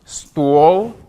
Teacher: On prononce bien son O. Hein? Stall. Il faut bien qu'il soit fermé, ce O.